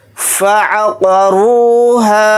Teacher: फ़ा को जल्दी पढ़ेंगे, आइन को जल्दी पढ़ेंगे, क़ाफ के ऊपर ज़बर है, क़ाफ को जल्दी पढ़ेंगे और क़ाफ को यहाँ पर मोटा पढ़ेंगे। रा के साथ वाव मद्दा है, रा वाव पेश रू को थोड़ा खींच कर पढ़ेंगे और रा को यहाँ पर मोटा यानी पुर पढ़ेंगे। · हा के साथ अलिफ मद्दा है, हा अलिफ ज़बर हा को थोड़ा खींच कर पढ़ेंगे एक अलिफ की मकदार। हालत वक़्फ़ में हा अलिफ ज़बर हा ही पढ़ा जाएगा।